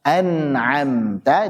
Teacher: Adapun nun dan mim yang berhukum izhar, an'amta itu juga ada gunnahnya.